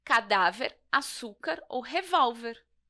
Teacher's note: Todas essas palavras têm ênfase na penúltima sílaba, por isso elas são paroxítonas